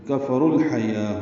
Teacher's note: کفروا کاف فا جلدی پڑھیں گے، رو پر پڑھیں گے، رو واو مدہ ہے لیکن الحیا کا حمزہ عارضی ہونے کی وجہ سے رو کو لام سے ملا دیں گے تو کفر الحیا ہو جائے گا۔ لام ساکن پہ اظہار قمری ہے کیونکہ ہا حروف قمری میں سے۔